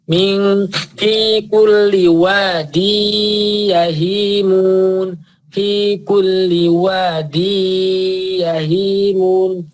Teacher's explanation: Idgham itu masuk, gunnah itu dengung. Jadi wadin dibaca wadi ke ya, langsung ke ya. N-nya enggak ada. Jadi bukan wadin yahimun tapi wadi terus ditambahi dengung. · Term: idgham bil gunnah